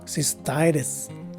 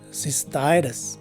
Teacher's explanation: the primary stress is in the second syllable of the word. The letter C takes an S sound, the letter Y a regular I sound, and both the two letter S's are regular sounding letter S's.